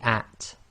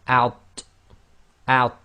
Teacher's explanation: So you have to differentiate between the at, which is light, i.e. tarqiq, and out, which is heavy, so it's tafkhim plus it's qalqala, so it's got an echo as well.